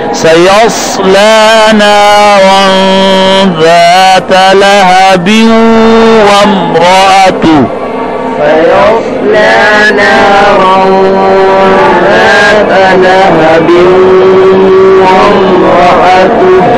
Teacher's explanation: نارن میں را موٹی ہے، ذات میں ذال نرم ہے